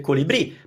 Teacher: The only reason the accent is there is to tell you that you should emphasize the bri.